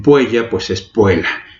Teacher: la doble L, la doble T exactamente se pronuncian como palabras simples